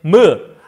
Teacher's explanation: 입술을 이용해야 미음 낼 수 있네